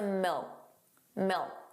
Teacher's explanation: So did you hear that the final K sound, that K, was not pronounced? It was just a milk, milk.